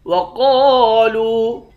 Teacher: قاف کو موٹا پڑھیں گے، ایک الف کے مقدار کھینچیں گے، لام کو واو کے ساتھ ملا کر لام کو بھی ایک الف کے مقدار کھینچ کر پڑھیں گے۔